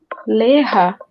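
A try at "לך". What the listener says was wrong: Joga a acentuação para o final.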